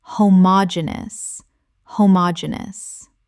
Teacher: 5 syllables with the stress on the third